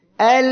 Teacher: আমরা উদাহরণ দেখি একটু। এল, দেখেন আওয়াজটা বন্ধ হচ্ছে না, এই যে লাম অক্ষরটি উচ্চারণের সময় এল। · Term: তাওয়াসসুত